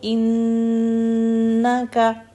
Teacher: ان نون مشدد کے لیے 2 حرکت کا ہم ہولڈ کریں گے نون کو